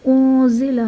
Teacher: انزل میں نون ساکن کے بعد حروف اخفا میں سے زا آ رہا ہے تو یہاں پر اخفا کا قاعدہ ہوگا، یعنی نون ساکن میں غنہ کر کے پڑھیں گے